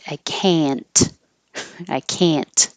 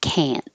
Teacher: you won't hear the T because your tongue is going to the N position, and then the N and the T are in the same position. So you're just not releasing the T.